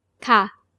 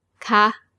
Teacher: For normal statements with a falling tone, ค่ะ and for questions with a high tone.